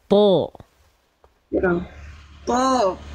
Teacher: Huruf to juga tebalkan lagi. Pangkal lidah diangkat.